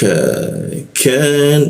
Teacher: lidahnya kita turunkan sehingga ada hembusan udara ketika membaca huruf K